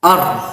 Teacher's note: Kalau ro-nya disukun dimatikan, or, jadi seperti ada getaran, or.